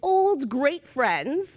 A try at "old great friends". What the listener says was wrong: Okay, you put too much emphasis on old.